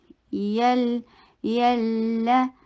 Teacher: نعمتی، یلا، یا سافٹ حروف میں سے ہے، جی کی ساؤنڈ نہ آئے۔ یلا، یہ یا جو ہے نا، یہ زبان کے درمیان والے پارٹ سے ادا ہوتا ہے، اوپر تالو کو چھوتا بھی نہیں ہے، بلکہ اتنا سافٹ ہوتا ہے۔